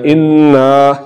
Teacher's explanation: انا، یہاں پر نون کے بعد الف آ رہا ہے تو زبر کو لمبا کرنے سے الف کی آواز نکل رہی ہے، یا الف سے پہلے زبر کہہ لیں کہ الف سے پہلے زبر آ رہی ہے تو اس کو ہم نے لمبا کرنا ہے. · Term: الف مدہ